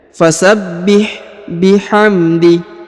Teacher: huruf ha sukun maka dibaca tipis